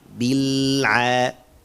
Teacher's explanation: Kita harus buat suaranya mengalir dan tahan lidahnya di makhraj lam bil sampai masuk ain.